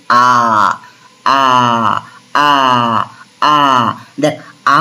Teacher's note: আ উচ্চারণ করার সময় জীব কিন্তু মাঝামাঝি অবস্থান করছে। এ কিন্তু কোনরকমভাবে নড়াচড়া কিন্তু করছে না। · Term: কেন্দ্রীয় স্বরধ্বনি